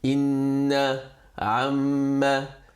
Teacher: And Wajibul Ghunna, the letters are just two, Noon and Mim, in the state of Shaddah. You've got that small W on top of it, and you read it with two haraka Ghunna.